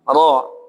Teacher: Ro memiliki harakat fathah maka dibaca tebal